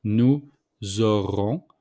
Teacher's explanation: we make the liaison between nous and auront with the S. So the S became mostly the Z.